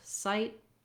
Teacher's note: So again, we have that I gliding diphthong, trying I, sigh. And then when we say words with T in American English like sight, we often don't really release that T. So it's called a stopped T. I might not say sight with a burst of air, but rather just sight.